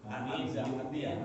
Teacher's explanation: hamzah mati ya hati-hati jangan sampai menjadi ain ya